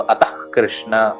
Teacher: अगर क है तो हल्का सा ख का उच्चारण होगा। हाँ, अगर विसर्ग के बाद कृष्ण ऐसा शब्द है, अतः कृष्ण, तो अतः कृष्ण हल्का सा ख का उच्चारण होगा।